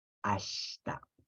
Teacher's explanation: En esa ash es la shi en realidad, pero la i no suena. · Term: mudas